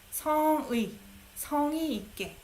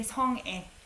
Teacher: You pronounce 의, by the way. You don't say 에.